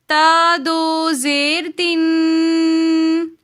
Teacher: دو زیر کی تنوین کو ہم غنے کے ساتھ پڑھیں گے۔ یہ جو ساؤنڈ ہے تن، اس ساؤنڈ کو ناک کے اندر لے کر جانے کو غنہ کہتے ہیں۔